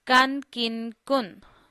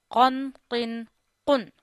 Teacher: So this kaf is a soft kaf. This qaf is a thick voice qaf.